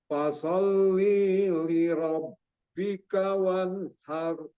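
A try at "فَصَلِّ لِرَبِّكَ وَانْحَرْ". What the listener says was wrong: Li-nya itu nggak ada yang panjang di situ, cuman ada tasdid aja ya. Fasalli li rabbika wanhar. Ya, ini tadi soalnya kejebak di sini bisa panjang, salah satu li-nya itu nggak ada di situ.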